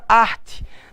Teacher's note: Na palavra arte, eu tenho um vocábulo com duas sílabas, onde a sílaba tônica é ar.